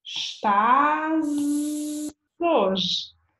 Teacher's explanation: So that's because we have an S at the end of a word and an H beginning the next word, and the H is silent, so actually we have a vowel sound